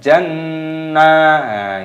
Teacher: Jannatu nun tasdid, hukumnya dibaca gunnah, didengungkan dulu baru dipanjangkan